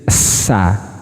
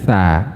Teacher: kalau sin seperti ini dia punya desis sa. Kalau ini nggak ada tha.